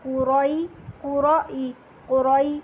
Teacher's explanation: جیسے ہی زبر پڑھ لیں گے تو یائی لین آ رہا ہے تو ہم یہاں پر ای کی ساؤنڈ نکالیں گے